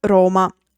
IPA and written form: ˈroma (Roma)